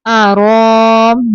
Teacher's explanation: آگے دیکھیے حمزہ آ گیا تو یہاں پہ مد ہو رہی ہے۔ انی آرام، حمزہ زبر آ، را کھڑی زبر رو، را کو اوپر پڑھنے ہیں۔ آرام، یا کے اوپر کچھ نہیں ہے تو ہم یا کو نہیں پڑھیں گے۔